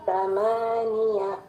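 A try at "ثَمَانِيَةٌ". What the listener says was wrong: Huruf H alirkan. Ya, huruf H-nya ya, huruf H. Harus ditunaikan juga ya H-nya.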